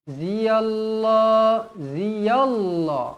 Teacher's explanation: lafzul jalalah dibaca tebal kerana sebelumnya berbaris atas